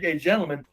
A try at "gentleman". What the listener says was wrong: A gentleman. Motherfucker, there is a T in gentleman. You appreciate the title. You didn't quite say you did. Pronounce the T, bitch, and I'll believe you understand English.